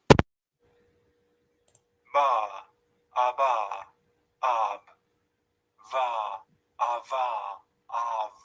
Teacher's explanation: whereas V is a fricative sound, we squeeze the air between top teeth, yeah, and lower lip. Both are voice sounds. · So when we block sometimes the air with a mouth or nose, and that time the sounds which are produced we call plosive sounds. So B, you can see we are blocking in when you're trying to pronounce it, and then you're releasing it.